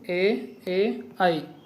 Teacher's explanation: కంఠాలు, తాళవ్యాలు ఇవి 2 కలిసి ఉండే అక్షరాలను కంఠతాళవ్యాలు అంటారు